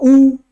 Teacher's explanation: होठ का वृत्त बन गया ये वृत्त मुखी है